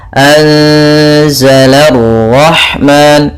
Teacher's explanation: la tipis, ro-nya tebal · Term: ra tafkhim